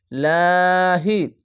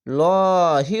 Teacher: জের বা যেকোনো জিনিস আসলেই এটি হবে পাতলা করে হবে লাহি আর ওপরে যদি জাবার পেশ বা কিছু আসলে লহি হতো মোটা করে তো এখানে নিচে আছে তার জন্য পাতলা করে পড়বেন লাহি নিচে